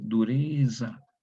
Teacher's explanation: Se pronuncia como una DS, dureza, es sonora, una Z sonora.